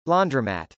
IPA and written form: lˈɔndrəmˌæt (laundromat)